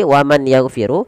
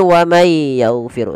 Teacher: ada nun sukun bertemu dengan huruf ya maka kita masukkan nunnya kepada huruf ya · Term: Idgham bunna